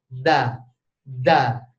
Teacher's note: tetapi yang membedakan adalah kalau da itu ditolak da da ya Jadi tidak ada angin yang mengintervensi kita kalau mau ngomong Da